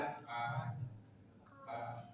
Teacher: kaf pangkal lidah tapi lebih ke depan daripada qof. Dan dia tarikti ka dan dia bersifat hamska ka.